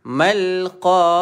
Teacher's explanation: Di sini huruf ain, makhraj ataupun sebutan huruf ain berada di kerongkong.